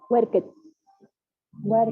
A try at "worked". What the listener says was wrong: No olviden la pronunciación. Worked. No hay worker. El ed no se escucha, más que en algunas excepciones.